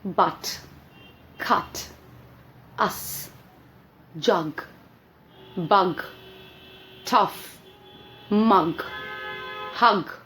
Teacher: हमारी next vowel sound है अह। अब इस साउंड को हम लोग बोलते हैं श्वा साउंड। ये हमारी one of the shortest sounds है